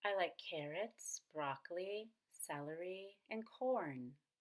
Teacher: to items in a list lists have their own special intonation you want to go up on each item in the list to show look I'm not done with my list but then on the very last item will come down · notice that on corn i divided corn into two syllables so I could go up on coal and down on earn